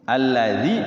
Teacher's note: alladzi berarti dzinnya panjang dua harakat. Karena kan kasrah ada ya sukunnya.